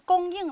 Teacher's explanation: 注意它在念供应的时候，有的小朋友读的是第四声就不对了，也是第一声